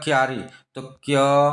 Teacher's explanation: एक व्यंजन क और एक व्यंजन य, दोनों एक झटका से एक साथ उच्चारण हो रहा है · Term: व्यंजन गुच्छ